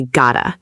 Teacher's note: The double T in the middle sounds almost like a fast light D. The tongue just taps the roof of your mouth very quickly there. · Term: flapped T sound